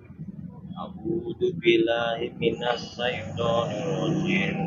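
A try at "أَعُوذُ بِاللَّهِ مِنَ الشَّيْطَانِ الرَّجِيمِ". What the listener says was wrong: Nah, ini ya, ini sin. Itu pakai shin. A'udzu billahi minasyaitonir rajim. Shin.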